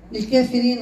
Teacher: هذه الكلمة قللها ورش هكذا للكافرين الراء مرققة